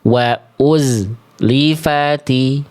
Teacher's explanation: bunyi z ini ngalir desis dan suaranya harus terus ee apa? Mengalir sampai bunda melafalkan huruf setelahnya.